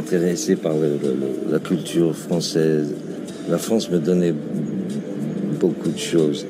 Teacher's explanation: Il a une voix assez grave et basse, et on dirait qu'il parle un peu dans le bas du visage